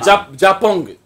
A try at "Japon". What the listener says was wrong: そ の グ ー が い ら な い